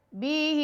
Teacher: بی کو لمبا نہیں کریں گے، ہا کو کریں گے کیونکہ ہا کے نیچے کھڑا زیر ہے